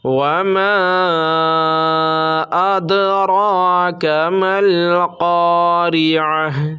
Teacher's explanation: وما ادرا پہ مد منفصل ہوگا، اس کو تھوڑا کھینچ کر پڑھیں گے۔ وما ادراک ما القارعہ، مد منفصل اس مد کو کہتے ہیں کہ جب حرف مد کے بعد، یہاں الف حرف مد ہے کیونکہ الف سے پہلے زبر ہے تو الف حرف مد ہوا، اور اس کے بعد حمزہ دوسرے کلمہ میں ہے تو مد منفصل ہوا۔